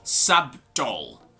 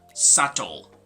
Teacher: so the letter b is not going to be pronounced so this is not sub dol with the letter b but